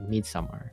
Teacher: the emphasis is on the first syllable, so it's like Midsummer.